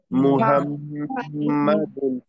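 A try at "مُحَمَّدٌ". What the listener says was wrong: মিমটাকে কিন্তু চাপ দিয়ে ধরে রাখতে হবে, মিমটাকে কিন্তু চাপ দিয়ে ধরে রাখতে হবে। মুহাম্মাদুন, বলেন। আর বাতাস বের করতে হবে। তারপরে এই দেখেন এখানে মিমের মধ্যে কি আসছে? তাসদিদ। মিমের মধ্যে তাসদিদ দেখলে কি করতে হবে? গুণনা।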